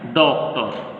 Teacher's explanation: इसमें आ और ओ दोनों की आवाज़ थोड़ी थोड़ी मिक्स होकर आती है, ना तो पूरी ओ की आवाज़ आती है ना पूरी आ की आवाज़ होती है